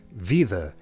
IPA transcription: viðə